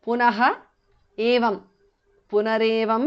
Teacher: Punarevam, because of sandhi. Visarga changes to repha.